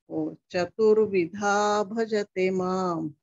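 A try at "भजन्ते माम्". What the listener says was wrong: Bhajante mam, not bhajate.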